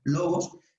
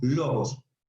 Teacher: Cuando está colocada, el agudo, aquí, el acento agudo es como el logos, está aquí, recae el acento, recae la pronunciación en logos, se hace la fuerza en la palabra, logos, y tiene un ascenso leve, no muy pronunciada, sobre el tono de dicha sílaba, como el logos, marcas que el acento está en la lo, pero no con mucha pronunciación, logos, cuando veas lo que es el agudo sobre la letra.